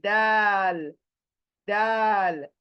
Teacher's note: इसका मखरज same like ट, same like ट, दाल बोल के देखें, वही मखरज है। यानी आपकी जबान की नोक सामने के दांतों की जड़ को लगेगी, जबान सामने के दांतों की जड़ जड़ को लगेगी और स्प्रेड होगी, चौड़ी होगी, स्प्रेड होगी।